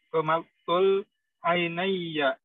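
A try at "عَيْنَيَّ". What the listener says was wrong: Baik, mumtaz.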